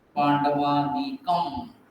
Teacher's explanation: यहाँ पर अनुस्वार है तो जनरली उसका म जैसा उच्चारण होता है। पांडवानीकम म नहीं दिख रहा, लेकिन अनुस्वार का उच्चारण म जैसा।